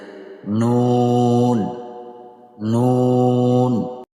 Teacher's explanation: জিহ্বার আগা তার বরাবর উপরের তালুর সঙ্গে লাগিয়ে